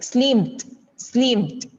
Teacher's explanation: Sometimes, instead of D sound, we can just say it with T sound at the end, like slimmed.